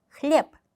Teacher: 하지만 단어 끝에 있기 때문에이 마지막 알파벳 소리는 흘려서 말한다라고 생각하시면 돼요. 클립 어떻게 보면 거의 소리가 안 나죠. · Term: 무성음화